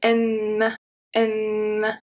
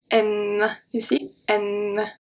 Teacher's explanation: the tip of your tongue is going to touch your upper front teeth. So if I say N, you can see the tip of my tongue here.